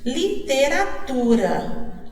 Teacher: Aonde está a sílaba forte? No tu, na penúltima sílaba.